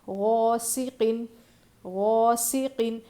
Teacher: غین کو موٹا پڑھنا ہے کیونکہ غین حروف مستعلیہ میں سے ہے، اور الف مدہ ہے، کھینچیں گے۔